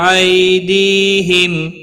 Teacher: حرکت والے حرف کو کھینچنا نہیں، تا ساکن کو ہلانا نہیں، یا لین ہے، تھوڑا نرمی کے ساتھ کھینچ کر ادا کریں گے ، دی یا مدہ ہے، ایک الف کے برابر کھینچ کر